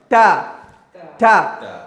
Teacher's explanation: the tongue is touching the upper parts of the teeth